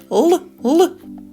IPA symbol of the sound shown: л